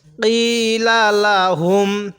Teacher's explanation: এই কফের মধ্যে আমরা এক আলিফ টান দিব, কারণ জেরের বামে যখন দেখব এরকম ইয়া সাকিন, তখন সেখানে আমরা এক আলিফ টান দিব।